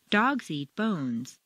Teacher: when you're making a statement for the first time you'll stress the nouns